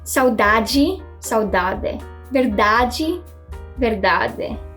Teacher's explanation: they use /dʒ/ sound instead of /d/ before the /i/ sound